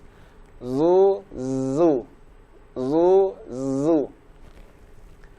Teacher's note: Sedangkan zai berharokat dhammah, kita ucapkan dari rahang tipis.